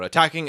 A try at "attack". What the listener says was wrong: Sorry, attack. You said attacking. I promise you did.